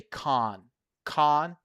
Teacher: If you go to the UK, you won't hear people say can or can't. They're going to say con.